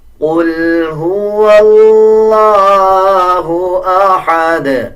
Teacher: احد جب وقف کریں گے تو دال کے اوپر قلقلہ کیا جائے گا